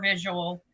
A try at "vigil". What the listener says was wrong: she said visual again, Vigil. Vigil. Vigil. It's not visual. They're two different things. Spelled very differently. One has an extra syllable. What one has 2 syllables, the other one has 3 syllables. The correct one is the 2-syllable one.